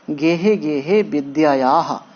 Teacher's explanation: गेहे गेहे विद्यायाः, हाँ ध्यान रखिए कि किसी अक्षर के बाद अगर दो बिंदी है, जैसे देखिए याह डबल बिंदी है, तो इसे विसर्ग बोलते हैं संस्कृत की भाषा में, व्याकरण की भाषा में, और इसका उच्चारण हम ह की तरह करते हैं, आधा हा।